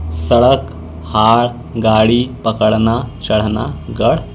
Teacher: इनका प्रयोग शब्द के मध्य या अंत में होता है। इनका उच्चारण करते समय जीभ झटके से ऊपर जाती है और उन्हें उच्छ्रिप्य या ऊपर फेंका हुआ व्यंजन कहते हैं, जैसे सड़क, हाड़, गाड़ी, पकड़ना, चढ़ना, गढ़ इत्यादि।